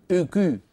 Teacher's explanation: اسمعوني جيدا اك وسط اللسان في وضع الراحه اللسان لا يعمل ان تعمدت ورفعت وسط لساني مع ضم الشفتين سيخرج هذا الصوت · ضم للشفتين يصاحبه ارتفاع لوسط اللسان